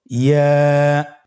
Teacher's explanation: ইয়া উচ্চারিত হয় জিহ্বার মধ্যখান তার বরাবর উপরে তালুর সঙ্গে লাগিয়ে উচ্চারিত হয়। আমরা জিহ্বার মধ্যখানটাকে উপরে তালুর সঙ্গে লাগিয়ে উচ্চারণ করি ইয়া।